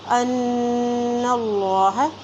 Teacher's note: اللہ کے نام سے پہلے جب زبر آتی ہے تو اللہ کا نام موٹا ادا کیا جاتا ہے